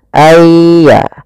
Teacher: masukkan nunnya kepada ya sehingga nunnya hilang, tinggal iya-nya. Ayya. Langsung ditasdidkan dia seakan-akan ya-nya 2. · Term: idgham bi gunnah